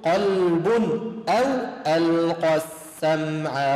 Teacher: إن في ذلك لذكرى، لا حرف اللام مفتوح، لذكرى لمن كان له قلب. قلب ليش أظهرت التنوين؟ لأنه بعد حرف الهمز إظهار